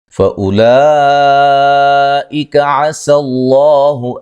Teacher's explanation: لام پہ مد واجب ہے، لفظ اللہ کو موٹا ادا کریں گے